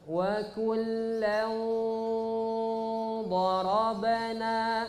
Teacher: Ditebalkan langsung karena huruf dhan huruf tebal.